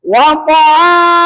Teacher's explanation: Ujung lidah dengan gusi gigi yang atas.